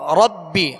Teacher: را پر زبر ہے پر پڑھیں گے، اور با پر تشدید ہے جمعوں کے ساتھ دوہرا پڑھیں گے.